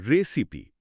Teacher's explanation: এর আসল উচ্চারণ রিসাইপ নয়, বরং রেসিপি। রেসিপি শেষে ই থাকা সত্ত্বেও এটা আই সাউন্ড তৈরি করে না।